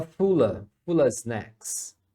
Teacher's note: porque a pronúncia aqui é of e muitas vezes é só a